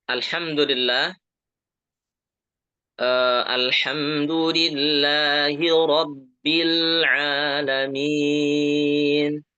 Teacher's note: hamzah yang ada di alif lam alhamdu ya, itu dibaca tipis ya, jangan jangan alham tapi alhamdu.